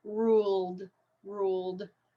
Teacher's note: Ed word is ruled so it's the l sound okay so my voice box is vibrating it's a voiced sound so that means the Ed ending should sound like a d